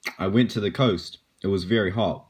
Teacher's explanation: Be a real- Raise your verbal intonation at the end of the sentence. New Zealand English speakers typically inflect their voices upwards at the end of declarative sentences. To American and British English speakers, it can sound like Kiwis are asking questions when they are simply making statements.